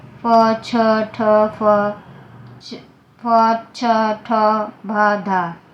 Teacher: महाप्राण व्यंजन जिसके उच्चारण से अत्यधिक श्वास निकले